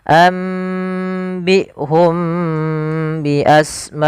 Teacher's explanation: Cara membacanya, mimnya ditahan dulu, jangan langsung ambihum bi asmaihim, tapi tahan dulu nya. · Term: ikhfa syafawi